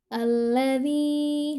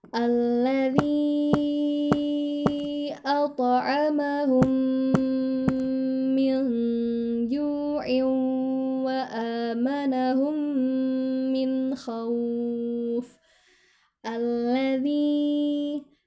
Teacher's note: Nah, ada bendera nih. Jadi harus dibaca 4 harokat. Karena setelah tanda benderanya ada huruf hamzah.